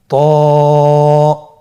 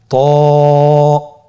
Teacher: জিহ্বার আগা, সামনের উপরের 2 দাঁতের গোড়ার সঙ্গে লাগিয়ে উচ্চারিত হয়।